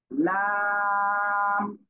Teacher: জিহ্বার আগার কিনারা উপরে মাড়ির দাঁতের গোড়ার সাথে লাগিয়ে উচ্চারিত হবে লাম।